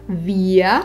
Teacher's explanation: že R na konci slova sa redukuje a vysloví ako a. Vyslovíme teda via a nie vir. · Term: redukované r